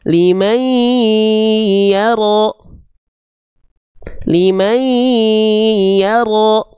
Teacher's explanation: Ya bertasydidnya bukan ditekan tapi ditahan. Karena ini ya bertasydid idgham bigunah, diikuti didahului oleh nun sukun atau tanwin. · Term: idgham bigunnah